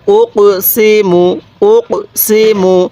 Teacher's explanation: এই যে কফ এর মধ্যে একটু ধাক্কা দিবেন কারণ কফটি তো কলকলা হরফ · হ্যাঁ, এরপরে হামজা লাগবে এই কপের সাথে উক, সিনজের সি, মিম পেশ মু, উক সি মু, উক সি মু। এই যে কপের মধ্যে একটু ধাক্কা দিবেন, কারণ কফটি তো কলকলা হরফ